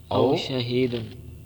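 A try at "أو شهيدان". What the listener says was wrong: شہید نہیں لکھا، حاشیے میں شہیدان لکھا او کی بجائے واؤ کہہ رہی ہونی چاہیے۔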